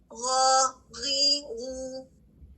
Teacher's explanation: اس میں سانس رکتا ہے جس کی وجہ سے غین کی آواز بلند ہے